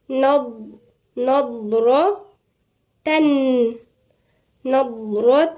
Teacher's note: الضاد هنا تنطق من عند مخرج الضاد موجود عند ناحية الأضراس، مش من طرف اللسان، من عند الأضراس، ونفخم الحرف نضرة نضرة.